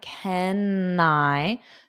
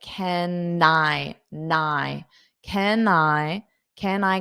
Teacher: you can hold out that N to go to the I